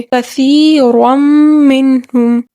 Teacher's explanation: ہم نون تنوین کو میم کے ساتھ مدغم کر کے ملا کر پڑھیں گے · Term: ادغام